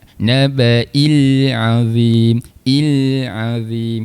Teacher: Sifat huruf lam dia tidak bersifat qalqalah. Kita jelaskan saja huruf lamnya.